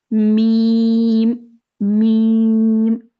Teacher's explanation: मीम की अदायगी जो है ना होंठों से की जाती है, यानी 2 होंठ जब आपस में मिलते हैं तो मीम अदा होता है